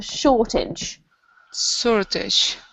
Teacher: it does look like you've got the word age on the end here, but for some reason we pronounce it idge, so it's like a shortage.